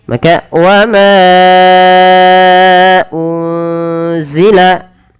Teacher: Kemudian berlafal unzila, ada nun sukun bertemu dengan huruf apa teman-teman? Huruf zai, maka nunnya disamarkan kepada huruf zai.